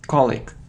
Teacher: So the stress is on the first syllable and we have the sound e, so a long e. So colic, it's incorrect.